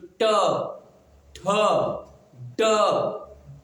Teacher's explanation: ट को पढ़ेंगे तो ट पढ़ते ही आपकी जीभ मुड़ जा रही